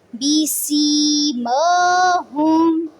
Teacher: ماں کو پڑھتے ہوئے ناک میں آواز نہیں لے کے جانی، ماں نہیں پڑھنا اس کو، ماں.